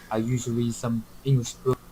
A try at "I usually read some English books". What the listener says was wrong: I can't hear the word read. I just hear I usually some English books.